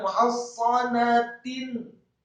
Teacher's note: Huruf sad bibir bawah kita agak ditutup, tidak sya atau tidak fa. Huruf sad seperti sin biasa, tidak tebal dan tidak tipis, namun posisi mulutnya agak tertutup, terutama bibir bawah kita. Illa fi quram muhassanatin.